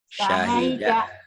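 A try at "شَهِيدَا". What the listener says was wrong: Bukan sahida. Syahida. Syahida.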